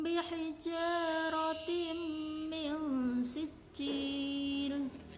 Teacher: Idgham biguna karena kasroh tanwin bertemu dengan mim dan cara membacanya adalah berdengung dan ditahan 3 harokat. Ikhfa karena huruf nun sukun bertemu dengan huruf sin dan cara membacanya adalah samar dan ditahan 3 harokat · ikhfa safawi karena mem bertemu dengan ba, dan cara membaca memnya adalah samar dengan mendengung dan ditahan dengan 3 harokat